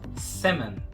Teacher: Não vamos pronunciar o L e o A vai ter meio que um som de E. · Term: L mudo